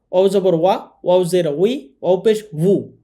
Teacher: অও দুই ঠোঁটের মাঝখানের ফাঁকা থেকে পড়তে হয়, অর্থাৎ দুই ঠোঁটের মাঝখানের ফাঁকা থেকে উচ্চারণ হবে অও।